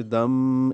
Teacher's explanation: تنوین کے بعد میم آنے کی وجہ سے دم ادغام غنہ کے ساتھ